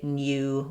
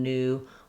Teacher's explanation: in UK English, they haven't dropped the y sound, so they will say Nyew rather than new